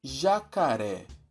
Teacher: Vimos que a tônica é a última sílaba. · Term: sílaba tônica